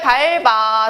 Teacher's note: 그냥 뒤에 있는 비읍이 넘어갑니다. 자, 그래서 모음으로 시작하는데 의미가 없어서 넘어가요.